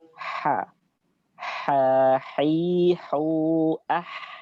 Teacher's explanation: Ha ada keluarnya dari tenggorokan tengah. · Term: huruf ha